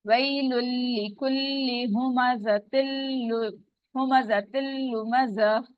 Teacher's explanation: लाम जो है आगे लाम के साथ मिल रहा है